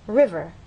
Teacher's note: understand that the first syllable is stressed